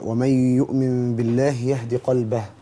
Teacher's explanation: حرف الهاء ده حرف من حروف الهمس حرف ضعيف فلابد ان يقوى بالنفس